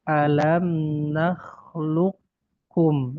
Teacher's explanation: Itu qaf sukun bertemu dengan kaf. Ya, dia idgham, qafnya masuk ke huruf kaf. Ya. Tetapi apa dia qaf sukun masuk ke huruf kaf, dia idghamnya karena makhrajnya berdekatan.